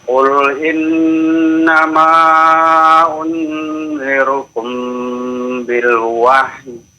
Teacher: mim ketemu dengan ba ya. Nah, ini namanya ikhfa syafawi ya. Jadi ditahan 2 harokat ya.